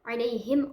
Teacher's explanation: huruf mim asyafatain mengatupkan bibir